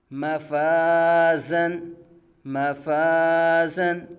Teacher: مفازن، مفازن، آگے میم باریک فا باریک، الف سے پہلے باریک حرف الف کو باریک پڑھا جائے گا